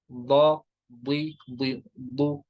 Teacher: زبان کی کروٹ اور اوپر کے دھاڑوں کی جڑ سے، جن کو کشمیری میں ارم کہتے ہیں.